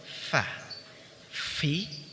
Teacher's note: Huruf fa diucapkan dengan menyentuhkan ujung dua gigi seri atas pada bibir bawah bagian dalam.